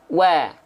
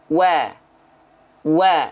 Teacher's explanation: wau itu bibirnya harus maju seperti mengucapkan huruf u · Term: huruf wau